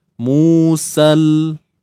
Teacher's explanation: bila kita baca secara sambung kita takkan baca dengan mad kita takkan baca dengan panjang dah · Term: pertemuan dua sukun